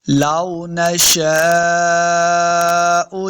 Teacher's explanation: دیکھیں جب بھی واو کو پڑھیں گے دونوں ہونٹ گول ہوں گے تب واو کا مخرج صحیح ادا ہوگا۔ لو نشاء، شین کے آگے الف، اس کے اوپر بڑی مد ہے تو ہم نے اس کو لمبا کر کے پڑھنا ہے